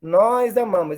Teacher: Esse S se transforma em Z diante de uma vogal, de uma vogal A, né?